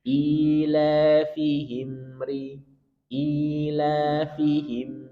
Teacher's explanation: Ia la juga mad thobi'i. Fihim ada mim sukun punya sifat bainiah atau tawasut. Sedikit kita alirkan.